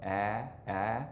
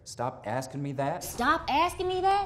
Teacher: the trap vowel which is the vowel in words like asking and that is a little higher